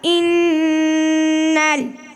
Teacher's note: الف کو نہ پڑھیں گے بلکہ بعد والے حرف سے ملا کر پڑھیں گے